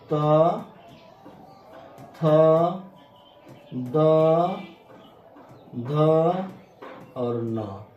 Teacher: हमारे जीभ सीधा दांत को टच करती है